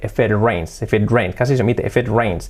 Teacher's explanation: ya no marco la T, porque cuando va seguida de vocal, o también en muchísimos casos de una vocal, de un sonido sonoro, de una consonante sonora, pues se hace también una R suave.